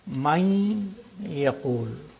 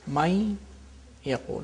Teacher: With the nasal quality of the noon is retained, and there is idgham, which is naqis, which is incomplete idgham. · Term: partial assimilation